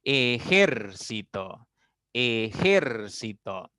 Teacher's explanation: ejército tiene cuatro sílabas pero su mayor fuerza o el acento está recayendo en la tercera sílaba